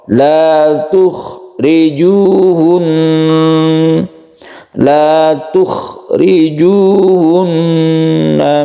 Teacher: Huruf kha ini makhrajnya atau tempat keluarnya itu ada di tenggorokan yang sebelah atas. Usahakan dibunyikan ciri khas dari suara kha.